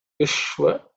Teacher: Ishwa is cerebral sh